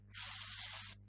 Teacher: So this means that when you're pronouncing the word, the sound s, it means that your vocal folds, your vocal cords, are a bit apart. So they let air come through without vibration.